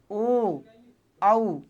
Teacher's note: मतलब ओ और आऊ में भी होठ कैसे हो रहे हैं गोल हो रहे हैं। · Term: गोलाकार स्वर